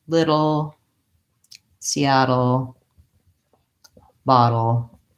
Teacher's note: All of these words have the same combination of the flap T and the L.